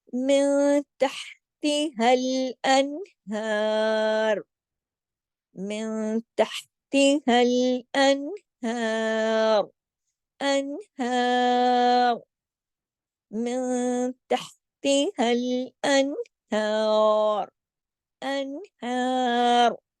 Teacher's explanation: हाँ की आवाज को मोटा नहीं करना, रा को मोटा करके छोड़ देना है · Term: रा मोटा